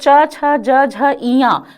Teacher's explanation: जिन वर्णों का उच्चारण करते समय जीहवा तालु की ओर ऊपर उठती है, उसे तालव्य वर्ण कहते हैं।